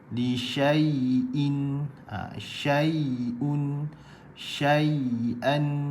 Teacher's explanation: ya berbaris dan ya lin keluar di bahagian tengah lidah